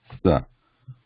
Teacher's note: sa is a dantya, or a dental sound, sa, requiring the tip of the tongue very close to the back of the front teeth